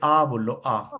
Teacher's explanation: कोई भी मुंह का कुछ हिस्सा बंद नहीं है